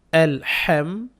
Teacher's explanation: হা টাকে কন্ঠনের মাঝখান থেকে উচ্চারণ করবেন